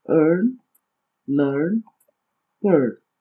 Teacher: o R está indicando que a vogal deverá ser pronunciada como um schwa com o acrescento do R, formando um dígrafo, ou seja, um som só